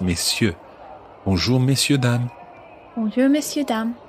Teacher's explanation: you don't pronounce the R in messieurs